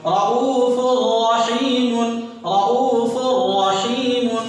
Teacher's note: دو پیش کی تنوین کے بعد یہاں دیکھیے را رہا، آواز ناک میں نہیں جائے گی، ادغام ہو رہا، آواز گنہ نہیں ہوگا.